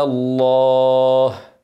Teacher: اسم الجلاله هتكون اللام مفخمه عشان قبلها مفتوح